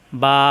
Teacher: আছে বা জাবর বা এখানে বামে খালি আলিফ বা এই যে একটু লম্বা করলাম এই লম্বা করাটাকেই বলা হয় টেনে পড়া